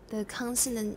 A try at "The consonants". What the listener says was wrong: Once more, your S. The consonants.